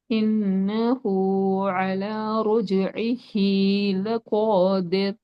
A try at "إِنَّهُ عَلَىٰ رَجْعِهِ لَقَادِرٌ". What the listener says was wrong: ஆனா சில எழுத்துக்களோட உச்சரிப்புகள் போதாது. காஃப்ட உச்சரிப்பு போதாது. ராட உச்சரிப்பு சரி.